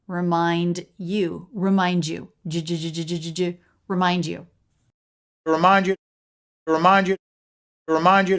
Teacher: D Plus y you're sometimes going to get this J sound